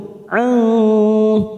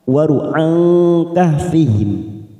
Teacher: Qala'at tazawaru an, za fathah bertemu alif, 2 harokat. Waru'an, nun sukun bertemu kaf, ikfa hakiki, kita samarkan 3 ketuk